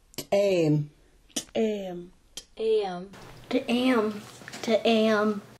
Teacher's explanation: It's like the T, but ejected out of the mouth with a strong pop. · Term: ejective T